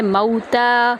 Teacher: تا کو ہم ایک الف کے برابر لمبا کریں گے